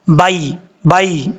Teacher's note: बा के बाद जो या है ये या लीन है, इसको लंबा करने की जरूरत नहीं, या लीन को लंबा नहीं किया जाता।